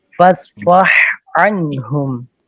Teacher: ہا اور عین کا مخرج ایک ہے وسط حلق، لیکن ان کا ادغام نہیں ہوگا